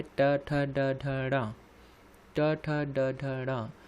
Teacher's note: मूर्धा से हमको पता है ट वर्ग का उच्चारण किया जाता है